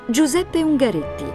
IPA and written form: dʒuˈzɛppe uŋɡaˈretti (Giuseppe Ungaretti)